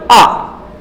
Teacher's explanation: केवल आ जैसे ही आप बोलेंगे तो जो जीभ है, जीभ के बीच वाला भाग उस पर जोर पड़ेगा। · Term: मध्य